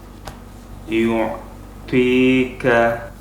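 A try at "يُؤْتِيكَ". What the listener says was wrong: Masih ada sedikit, ya. Jadi untuk angin harus jangan disertakan untuk huruf to.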